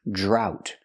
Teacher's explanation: We see the DR making the J sound like juice and jump, plus the R, drought. We see the OU making the OW sound like out and about, drought.